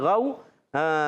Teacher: تو تطلو غو پڑھنا ہے، غین واو زبر غو، یہ غین ادا ہوتا ہے حلق کے اوپر والے حصے سے